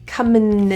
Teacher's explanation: The word in is also very similar, and we're reducing that vowel, so it's going to sound like another N. Comin. So you're saying an N and another N.